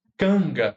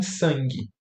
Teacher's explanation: Canga vai ter uma nasal velar, aqui, para concordar com o ponto de articulação do G, que é velar